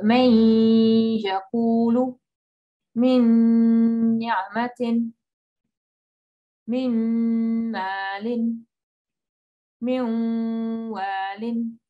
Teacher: And today is a kind of in-between sound, but it's still idgham. It's idgham, but there's a bit of a ghunna left. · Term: idgham naqis